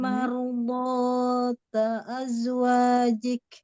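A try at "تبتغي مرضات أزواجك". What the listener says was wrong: Botnya mau lebih botnya coba angkat isti'lanya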